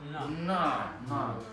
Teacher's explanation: это церебральный, это кончик языка к верхнему небу.